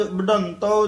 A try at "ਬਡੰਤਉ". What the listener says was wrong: ਬਡੰਤਉ ਤਤਾ ਬੋਲਣਾ ਬਡੰਤਉ ਧਦਾ ਨਹੀਂ ਬੋਲਣਾ